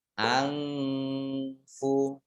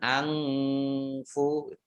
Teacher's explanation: nun sukun bertemu dengan huruf fa, ini bacaan ikhfa, ya, dibaca samar-samar